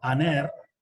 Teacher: el espíritu suave prácticamente no se pronuncia